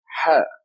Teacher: This letter is Ha, a loud whisper. And we write it as an H with a dot under it.